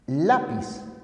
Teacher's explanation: el acento se encuentra en la penúltima sílaba como en lápiz esa se denominan palabras graves y en otros